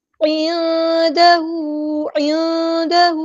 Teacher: نون ساکن کی آواز کو ہمیں چھپا دیں گے. عندہ عندہ عین کو وسطی لیکن تھروٹ چلنا چاہیے.